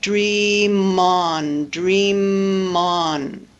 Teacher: the M at the end of dream straddles the two syllables and we have dream on, dream on.